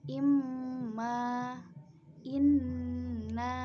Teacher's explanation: nun dan mim tasdid dibaca dengung kira-kira satu alif atau dua harokat. Contoh bacaannya imma, inna.